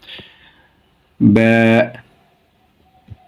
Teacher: উচ্চারণের স্থান ঠোঁটের ভিজা অংশ হতে